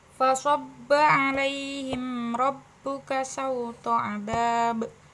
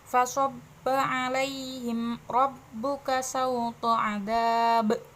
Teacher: Karena qalqalah kubra terletak pada akhir ayat, jadi harus mantulnya lebih keras.